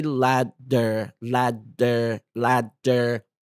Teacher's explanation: very quickly ladder ladder ladder ladder ladder ladder ladder ladder ladder notice how tongue lightly Taps the roof of your mouth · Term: flap T